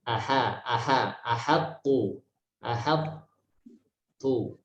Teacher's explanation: Walaupun berdekatan dengan huruf to yang tebal, huruf H tidak boleh ikut dibaca dengan tebal.